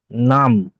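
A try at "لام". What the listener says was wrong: নাম, নাম নয়, লাম। লামটা এটা বলবে লাম। নাম নয়, লয় আকার মো, লাম।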